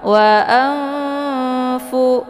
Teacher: nunnya disamarkan kemudian siap-siap masuk ke huruf Fa wa Anfu jadi bacaannya seperti nunnya digantungkan ya mau menuju ke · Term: ikfaad, Ikfa